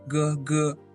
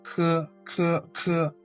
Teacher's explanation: G doesn't carry as much air as the C. So with G G C every time I say it's an aspirated sound, you could use a paper and just put it in front of your mouth to see are you gushing out as much air.